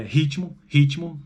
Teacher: veja que tem um I ali depois entre o T e o M, embora na escrita sejam duas consoantes.